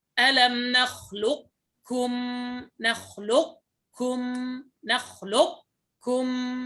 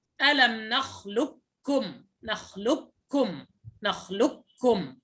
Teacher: أما القول الثاني وهو الراجح الإدغام الكامل فهو ألم نخلقكم كاف مشددة فقط، ولا أثر للقاف